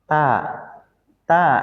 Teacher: Ta ta itu dia pakai gigi seri maka sebetulnya enggak diangkat lidahnya kan. Jadi kalau dia lidahnya enggak diangkat maka dia bukan huruf istiala. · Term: huruf ta